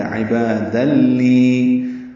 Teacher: نون کی آواز ختم ہو گئی، یہ دال لام سے مل گیا، یہ ادغام کامل ہے، مکمل تنوین لام سے ملا دی گئی